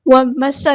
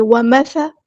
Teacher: سا کو نرمی سے ادا کرنا ہے اور ایئر فلو آنا چاہیے